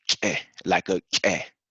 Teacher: like you have a small explosion from like the back of your throat.